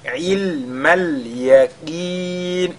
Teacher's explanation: Le qaf qui est lu avec, n'est-ce pas, tafkhim, bien qu'il soit affecté de la kasra.